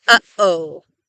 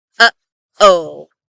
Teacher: a glottal stop, which is the sound that we make in the middle of the word uh-oh